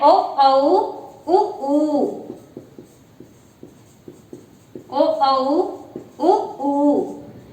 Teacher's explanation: पश्च स्वर के अंतर्गत हमारी जिह्वा का पिछला भाग सक्रिय रहता है